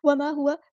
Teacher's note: الف مد آ گیا تو مد اصلی کریں گے، ہوا ہاں سمپل ادا کریں گے، واو کے زبر کو لمبا نہیں کریں گے